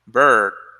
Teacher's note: Yeah, it's schwa, but it's a long schwa.